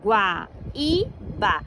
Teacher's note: E quando separamos silabicamente, fica Guaíba. E o I é a sílaba tônica ali nesse caso. Então, leva acento porque é hiato I, formando sílaba tônica ali na palavra.